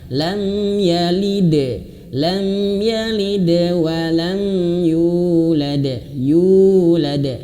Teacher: Yulad. Yu awas, yu ini panjang 2 harokat